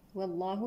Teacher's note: لام لفظ الجلالة مفخم لأن سبقه فتح